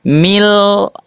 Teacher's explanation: Tidak dibaca min tapi mil. Ah, dimasukkan ke huruf lamnya. Mil yang kedua bighir gunah tanpa didengungkan atau digunahkan. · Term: idgam bighhairi gunah